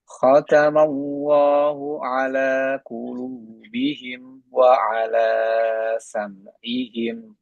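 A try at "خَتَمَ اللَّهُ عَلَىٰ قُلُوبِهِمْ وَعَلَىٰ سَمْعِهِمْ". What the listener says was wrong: dua harokatnya di sini tadi kelebihan. Wa ala sam'ihim. Harusnya wa ala sam'ihim. Samakan dengan dua harokat yang di sini.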